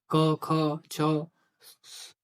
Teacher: स्वर तंत्रिका में कंपन उत्पन्न नहीं होता है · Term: अघोष